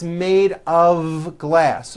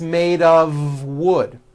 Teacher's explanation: of wood it's not a f wood with an unvoiced F it's all voiced and it's all connected